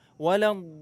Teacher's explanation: Huruf dhad di sini ada tasydid. Jadi tahan dulu.